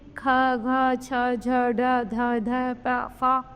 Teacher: आगे है महाप्राण। इन व्यंजनों का उच्चारण करते समय श्वास वायु अधिक मात्रा में और अधिक वेग से बाहर निकलती है तथा हा की ध्वनि सुनाई पड़ती है।